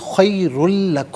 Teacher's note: را پر دو پیش کی تنوین ہے، پر کر کے پڑھا جائے گا، تنوین کو لام کے ساتھ ملائیں گے، اور یہاں پر یرملون کا جو قاعدہ اپلائی ہوگا تو اسے خیر لکم پڑھیں گے، خیر لکم نہیں، خیر لکم، لام کی آواز ادا کی جائے گی۔